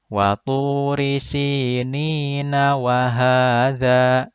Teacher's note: Kalau disambung, maka ni-nya dibaca 2 harokat karena mad tabi'i.